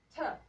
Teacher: In this part is the place where teeth are located. So the tongue tip is behind the teeth. And then this sound is called alveolar. Its point of articulation is alveolar.